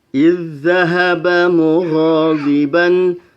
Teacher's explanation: Idz zahaba mughadiban, ada bacaan idgham mutamatsilain karena ada zal sukun bertemu dengan zal yang berharokat, maka zal yang sukun masuk ke dalam zal yang berharokat, yaitu zal yang kedua